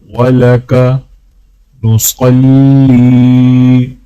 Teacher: لام کو جب یا کے ساتھ ملائیں گے تو ایک الف کے برابر کھینچیں گے